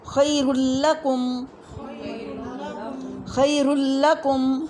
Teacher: نون ساکن یا تنوین کے بعد لا یا را میں سے کوئی حرف آ جائے، یعنی ان دو میں سے کوئی حرف آ جائے تو وہاں ہم مکمل ادغام یعنی کمپلیٹ مرجنگ کریں گے، یعنی نون کی آواز باقی نہیں رہتی، غنہ نہیں ہوگا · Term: ادغام بلا غنّہ